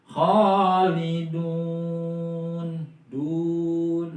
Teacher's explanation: Khalidun itu kan mad tabi'i. Karena di akhir ayat maka disebutnya mad arid li sukun dan dibacanya yaitu 6 harokat ya.